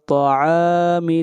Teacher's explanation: طا کو موٹا پڑھیں گے، حروف استعلا میں سے ہے